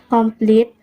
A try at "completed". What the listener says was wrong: He also mispronounced completed as complete, omitting the final D.